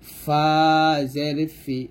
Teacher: ফাটা উপরে দুই দাঁত নিচের ঠোঁটের পেটের সঙ্গে লাগিয়ে ফা টা পাতলাক উচ্চারণ করব ফা জের ফি এরকম তো এর